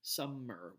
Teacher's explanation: stressed some of the word summer is divided into two syllables the first syllable is the one that's stressed